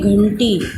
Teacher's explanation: ये नाक से जो बिंदी की साउंड है वो हमारी नाक से उच्चारण आता है, इसीलिए उसको अनुस्वार बोला जाता है।